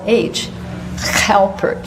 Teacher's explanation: he spoke his words with a guttural H, Halpert.